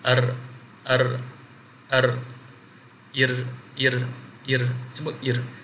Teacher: Dia akan pergi makhraj ra, kemudian dia lencong sikit kepada makhraj lam. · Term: al-inhiraf